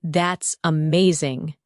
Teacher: When you say, That's amazing, your tone rises with excitement.